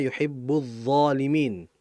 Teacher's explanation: Lamnya enggak jelas tapi langsung masuk ke huruf dnya.